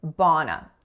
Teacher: So two syllables there. That first vowel is that low back open ah sound, and the second vowel is a schwa.